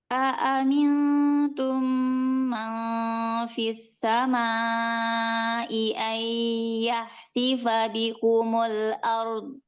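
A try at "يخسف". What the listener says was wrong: Yakhsi, tebalkan kho-nya. Yakhsi. Yakhsi.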